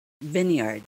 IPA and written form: ˈvinyərd (VINEYARD)